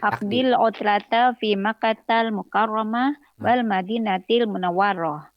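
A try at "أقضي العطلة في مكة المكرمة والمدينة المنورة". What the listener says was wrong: Wa-nya itu bertasydid, Ibu. Jadi kalau ada tasydid itu ditekankan ya dalam bahasa Arab.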